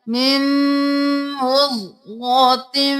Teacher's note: मीम को मीम के साथ मिलाना है गुन्ना भी करना है